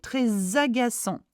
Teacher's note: So it's a S sound. ANT is a en sound. Do not pronounce the T.